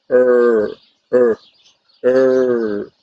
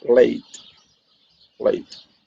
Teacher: And this sound is our viral sound, as I told you before, because it's right, the tongue is placed right behind the upper teeth and is liquid. It means that the airflow go on one or both sides of the tongue.